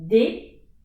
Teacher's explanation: the tip of my tongue is at the top of my mouth